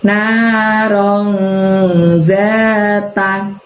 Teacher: disamarkan itu n-nya agak-agak menyerupai ng kayak eng ya.